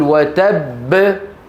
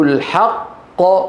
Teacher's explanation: لأن كلا الحرفين ظاهر في النطق، فالأول منهما مدغم والثاني مقلقل، فلا حاجة إلى النبر هنا. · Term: حرف القلقلة المشدد